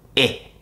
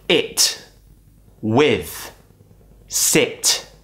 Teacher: it's an unrounded sound which means we create more of a smile when we create this sound · the tongue goes kind of up not touching the top but it's near the top of the mouth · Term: quick I sound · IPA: /i/